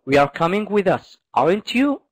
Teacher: it's going up at the end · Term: rising intonation